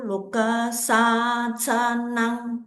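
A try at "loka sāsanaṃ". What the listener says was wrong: Loka sasanang. Don't forget long O lah. O always long lah. Loka sasanang.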